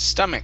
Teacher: instead of stomach with the ch sound it's a k sound